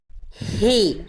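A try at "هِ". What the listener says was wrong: Jadi nafasnya ini karakternya masih kurang di tengah tenggorokan. Kurang berbisik. Coba lagi Bunda ikuti saya. Coba Bunda lafalkan H kecil, tapi yang dikeluarkan nafasnya dulu untuk latihan. Coba ikuti saya ya, perhatikan saya dulu ya. Ha.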